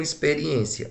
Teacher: Ela é acentuada também na penúltima. Logo, eu digo que ela é uma paroxítona. Veja que ela terminou em IA, que é um ditongo.